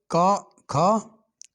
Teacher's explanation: कंठ ध्वनियां, जिनका उच्चारण कंठ से होता है।